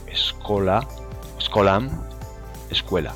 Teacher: Para terminar también, nombrar el fenómeno de la prótesis, que no es sino la adición de una E en aquellas palabras que comienzan por ese líquida, es decir, por esa seguida de consonante